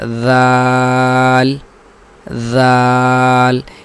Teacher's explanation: اس کو اگر ہم زال پڑھیں زال زال تو یہ مخرج تو زا کا ہو گیا نہ کہ ذال کا، اس لیے ذال کا جو مخرج ہے اس کو دیکھ کر اس کی ادائیگی کی کوشش کرنی چاہیے۔